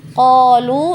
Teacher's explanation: kalau kita berhenti memilih untuk berhenti di kata qolu maka tetap kita baca panjang 2 harokat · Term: mad